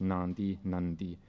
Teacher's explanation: This nasality spreads through the vowel, or nasals nasalize a following vowel, and then the nasality becomes a segmental nasal before the following plosive.